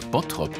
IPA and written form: ˈbɔtrɔp (Bottrop)